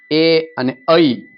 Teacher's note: એ અને ઐ કંઠ અને તાળવા બંનેનો ઉપયોગ થયો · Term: કંઠ તાલ્ય